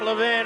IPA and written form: ləˈvɪn (Levin)